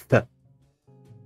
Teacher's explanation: So the next one here, th, is somewhat different because now you really use the tongue. You use the tongue against teeth to produce th. So this is a dental fricative.